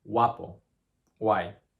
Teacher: the G in Spanish is so light sometimes that sometimes the sequence of sounds G-U-A in Spanish actually sounds more like a wa, wa. So in the words guapo, guay, can end up pronounced like guapo, guay.